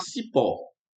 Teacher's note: Porque a sílaba forte é a última. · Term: oxítona